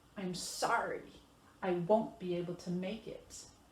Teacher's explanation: This one shows a little bit different because now we're stressing our negative verb, whether it's won't or can't. And we're stressing our verb make it.